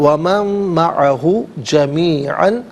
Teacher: من میں نون ساکن ہے، اسے مع کی میم کے ساتھ ملائیں گے، میم کی آواز کو غنّے کے ساتھ ادا کریں گے